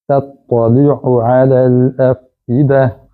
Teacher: یہ ذرا مشکل لفظ ہے کیونکہ تا اور تو ایک ہی مخرج سے ادا ہوتے ہیں، لیکن تھوڑا سا فرق کرنا ہے آواز میں. تا کی آواز باریک اور تو کی آواز موٹی آئے